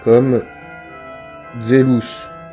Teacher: Le Z se prononce dze, comme zelus.